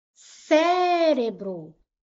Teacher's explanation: Qual foi a sílaba mais forte, sílaba tônica, a antipenúltima, ó. Última, penúltima, antipenúltima. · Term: proparoxítona